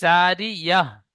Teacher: এই জারিয়াতুন শেষে যে তা রয়েছে, এখানে আমি থামবো, তাই হা সাকিন করে পড়বো শেষ অক্ষরটি, তার পড়বো না।